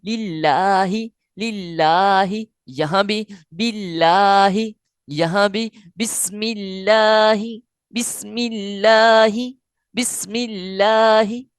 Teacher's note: اللہ کی لام سے پہلے والے حرف کے نیچے زیر ہے تو اس لیے اس کو باریک پڑھیں گے